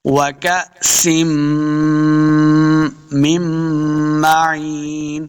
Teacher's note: وَكَأْسٍ، سین دو زیر میم، میم مشدد ہے، سین کے بعد سین کے نیچے دو زیر کی تنوین ہے، آگے میم مشدد ہے تو ہم نے اس کے اوپر غنہ کرنا ہے